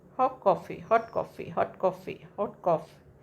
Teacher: So T is deleted. That T is deleted. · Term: deletion